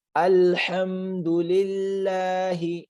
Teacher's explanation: یہ سمپل والا ہا ہے، یہ حلقی نہیں ہے